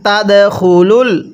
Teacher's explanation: এই দালটা আমরা ধাক্কা দিয়ে পড়ব। কলকলার হরফ যেখানে দেখব সেখানে ধাক্কা দিয়ে পড়তে হবে।